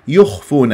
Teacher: الياء مرققه مضمومه الخاء مفخمه من احرف الاستعلاء